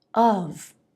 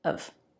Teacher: It's of. Schwa, very light V, said very quickly. And actually, you'll often hear this word without the V.